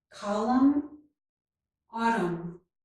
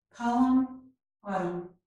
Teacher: So the letter N is not pronounced, and both of these words end in the M sound.